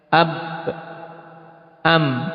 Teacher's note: Cuman bedanya antara ketiga huruf yang sama-sama dari dua bibir, yaitu bahwasanya ba dan mim dengan intibaq. Ya, intibaq yaitu dengan betul-betul merapatkan, dikatupkan secara rapat.